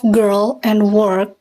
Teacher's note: The vowel of girl and work is usually reduced in length, so it is not as long as its RP equivalent.